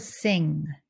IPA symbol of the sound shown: ŋ